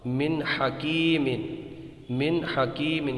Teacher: تو یہاں پر دیکھیں گے آپ نون ساکن ہے، نون ساکن کے بعد یہ دیکھیے یہ نون ساکن ہے، اس کے بعد میں یہ ہا ہے تو نون ساکن کے بعد میں حلقی کا ان 6 حروف میں دیکھیے تیسرا حروف ہا ہے، ہا آیا ہے تو یہاں پر اظہار ہوگا